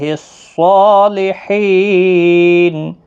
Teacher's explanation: صاد موٹا پڑھیں، حروف مستعلیہ کا حرف ہے